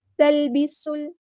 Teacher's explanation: سین میں سیٹی آنی چاہیے